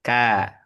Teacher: Istifal tipis, infitah terbuka.